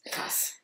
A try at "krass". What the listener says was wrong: Krass. Krass. Quand même un peu long. Et le S bien prononcé, vu qu'il y a les deux S.